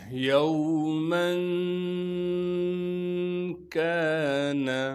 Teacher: کاف کو باریک کر کے پڑھنا ہے، کاف کے بعد الف مدہ موجود ہے، لہٰذا کاف کو ایک الف کی مقدار کھینچیں گے، نون کو بغیر کھینچے پڑھنا ہے۔